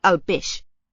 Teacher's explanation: So I don't hear a diphthong.